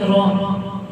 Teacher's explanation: را کے اوپر زبر ہے تو را کو پر یعنی کہ موٹا پڑھیں گے